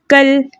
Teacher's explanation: इसके अलावा इस काफ को हम बारीक पढ़ेंगे, हमने मोटा नहीं करना। काफ भी बारीक हुर्फों में से है और लाम भी बारीक ही पढ़ा जाएगा, क्योंकि लफ्ज़ अल्लाह और अल्लाहुम्मा के लाम के अलावा लाम बारीक ही पढ़ी जाती है।